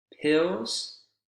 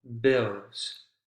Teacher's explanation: Voiceless, no vibration. Voiced, vibration.